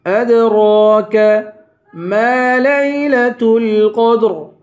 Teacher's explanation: وما ادراک، وما کو 3 الف کی مقدار کھینچ کر پڑھیں گے. ادراک، اد پہ قلقلہ کریں گے، را پہ کھڑا زبر ہے، ایک الف کی مقدار را کو کھینچ کر پڑھیں گے.